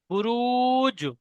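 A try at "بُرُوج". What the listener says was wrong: হুম, টান দিয়ে বলতে হবে বুরুজ।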